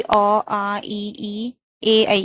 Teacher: इसमें होंठ गोल नहीं हो रहे तो अवृद्धमुखी हो गए।